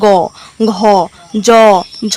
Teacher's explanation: এগুলোতে একটা গম্ভীর্য তৈরি হচ্ছে, তো সেগুলোকে বলা হচ্ছে ঘোষ ধ্বনি